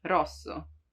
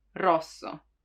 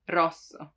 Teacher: you have to make it vibrate you don't have to prolong it too much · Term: rolled